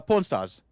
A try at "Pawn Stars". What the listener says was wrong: Porn stars? Pawn Stars. Pawn. made it sound like porn.